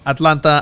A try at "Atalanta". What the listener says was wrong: Atlanta or Atalanta? It sounds like you're saying Atlanta.